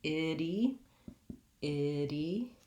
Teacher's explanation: The vowels need to not match. It has to clearly go from I to E